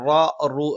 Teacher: നാവിന്റെ മധ്യഭാഗം മുകളിലേക്ക് ഉയർന്നു നിന്നുകൊണ്ട് വളരെ കനപ്പിച്ചുള്ള ഒരു ശബ്ദമാണ് വരുന്നത്